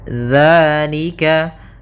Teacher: Pada lafalika di sini ada hukum tajwid berupa mad thabi'i. Yaitu adanya fathah bertemu dengan alif. Maka kita panjangkan dua harakat.